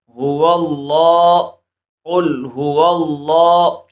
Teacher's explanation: اس میں جلالت اللہ عز و جل کے لام سے پہلے زبر آ رہی ہے، اس وجہ سے ہم اس کو پر پڑھیں گے